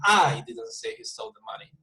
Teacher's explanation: the volume is high at the beginning, and then I go down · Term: emphasis